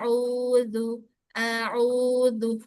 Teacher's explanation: perjelas bunyi ainnya. Jangan masuk ke hidung.